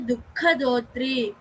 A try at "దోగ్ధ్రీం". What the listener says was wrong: దోగ్ధ్రీం దోగ్ధ్రీం గా కింద దావత్తు రావత్తు రెండు ఉన్నాయి క్రావడి. దోగ్ధ్రీం దా కూడా వినిపించాలి.